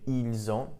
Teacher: notice here we have the liaison, we have a link. So we have ils ont, notice the pronunciation, the S actually does get pronounced this time.